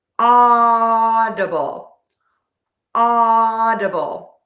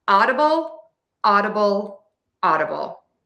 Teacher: I'm using that flap T which sounds like a super fast D. And then be sure to end with that bull. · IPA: /ˈɔ.də.bəl/